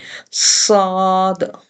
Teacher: صاد ہونٹ over shape میں گئے ہیں، موٹا پڑھا گیا، اور جو ہے سیٹی کی آواز آئی،